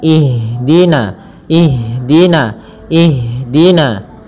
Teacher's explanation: jangan sampai huruf Ha ini memantul